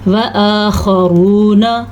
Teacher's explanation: یبتغون من فضل اللہ، یہاں پہ اللہ کا نام باریک پڑھنا ہے کیونکہ اللہ کے نام سے پہلے زیر ہے تو اللہ کا نام باریک پڑھا جائے گا۔ وآخرون، خا پر پڑھنی ہے، را کو پیش ہونے کی وجہ سے پر پڑھنی ہے